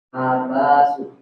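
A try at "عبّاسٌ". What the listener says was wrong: Ada tasdid di ba. Jadi ada tasdid di ba-nya ya. Abbasun.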